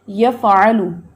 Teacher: آپ نے فا کا ہمس نہیں ادا کیا اس لیے جھٹکا آ گیا